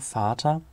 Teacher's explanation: in manchen Dialekten noch kurz, aber hochsprachlich lang